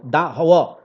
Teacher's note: दांत और ओठ के मिलने से व का उच्चारण होता है, और ये अंतस्थ व्यंजन का भी उदाहरण है।